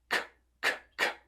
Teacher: o som do K é um som que não tem voz.